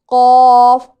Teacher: ज़ुबान की जड़ जब कव्वे के करीब से नरम तालू से लगे तो इससे कौफ अदा होता है।